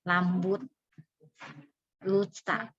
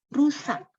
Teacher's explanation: memang anak-anak kalau nyebut R itu jadi L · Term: cadel